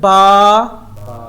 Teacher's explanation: جب ہونٹ آپس میں ملتے ہیں تو وہاں سے با ادا ہوتا ہے، اور جو لیٹر ہونٹوں سے نکلے اس کو کہتے ہیں شفوی لیٹر۔